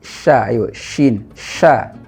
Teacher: Pengucapan huruf shin ini karena dia huruf lisaniyah, sha, shin, sha. Jadi jangan sampai sha tebal deh, karena dia tipis, huruf istifal.